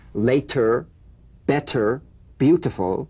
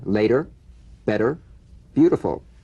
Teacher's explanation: the medial T becomes a soft d alright it not a complete d but it goes toward addy